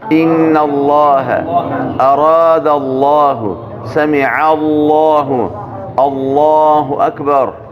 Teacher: لفظ د الله چې کم لام دی مخکې که زور یا پیش نو ډک ویل کېږي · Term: تفخیم